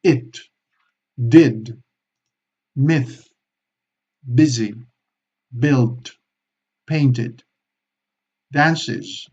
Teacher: Y la I corta, todo lo contrario. Muy corta, también muy opaca, muy sin apenas hacer esfuerzo con la boca. It, did, myth, busy, built, painted, dances, todos digamos, los que son todos los plurales regulares, cuando acaba, por ejemplo, en la S, cuando tenemos que hacer is es siempre una I corta.